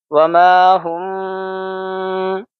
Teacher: میم ساکن کے بعد با ہے اس لیے یہاں پہ ہم اخفا کریں گے، آواز کو ٹھہراؤ پن دیں گے، ناک میں آواز لے جائیں گے۔